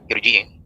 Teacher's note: kalau ro sebelumnya kasrah tipis Namun karena ada Hamzah wasal jadi tebal